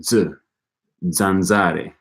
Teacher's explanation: It can be either voiceless or voiced, as in S or Z. Z represents a dental affricate consonant.